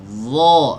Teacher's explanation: huruf dha itu adalah huruf dzal yang lidah belakangnya diangkat.